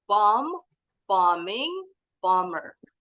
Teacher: Walaupun ditambahin akhiran, tetap B-nya nggak bunyi.